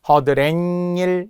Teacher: 허드렛일은 니은 소리가 덧난 거죠